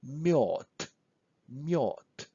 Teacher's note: When we say mjod, we practically say T at the end. But when we write this word down, we have to write D at the end, mjod.